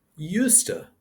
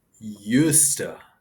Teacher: Used to is pronounced used to like used to. The duh sound in the used is silent and the words are connected. Used to. It's kind of fun to say. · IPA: /ˈjuːstə/